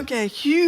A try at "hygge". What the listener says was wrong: It's actually in the lower part of your mouth.